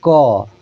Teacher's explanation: हमने बोला क तो क आवाज कहां से आया? कंठ से। तो इसका उच्चारण स्थान कंठ होता है।